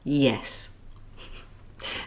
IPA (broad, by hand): j